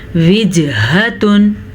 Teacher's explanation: جیم پہ قلقلہ ہو رہا ہے، جیم حروف قلقلہ میں سے ہے